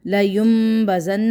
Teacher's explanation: نون کی آواز کو میم کی آواز کے ساتھ بدل دیا، کیونکہ دیکھیں چھوٹا سا میم لکھا ہوا ہے، آپ کو نظر بھی آ رہا ہے، تو یہاں پہ ہمارا اقلاب ہو رہا ہے۔